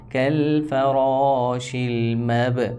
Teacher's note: با قلقلہ میں سے ہے اس وجہ سے حرکت دے کر پڑھیں گے، ہلا کر.